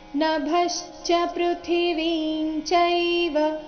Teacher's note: ಕಾರಣ ನಭಶ್ಚ ಇಲ್ಲಿ ಭ ಮಹಾಪ್ರಾಣ ರಸ್ವ ಅದರ ಮೇಲೆ ಆಘಾತ ಬರಬೇಕು ಪೃಥ್ವಿಂಚೈವ ವಿ ದೀರ್ಘ ಅದರ ನಂತರ ಅನುಸ್ವಾರದ ಉಚ್ಚಾರಣೆ ಚ ವರ್ಗದ ಅನುನಾಸಿಕ